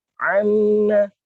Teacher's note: makhrajnya kalau belajar dengan makhraj, ternyata dia bagian tengah tenggorokan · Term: ain